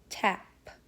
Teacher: The first sound is p. P is a stop voiceless sound made on the lips